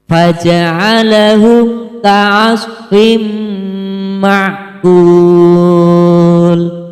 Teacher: Hai karena huruf Paul berharokat kasroh tanwin bertemu dengan huruf mim cara membacanya adalah berdengung dan ditahan tiga harokat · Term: Idgham Bighunnah